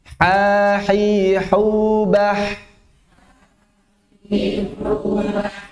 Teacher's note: Sama dengan ain, perbedaannya dia hams. Ain jahar, kemudian dia rikhwa